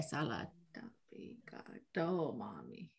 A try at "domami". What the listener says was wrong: Yeah, get that high tone on the oh domami.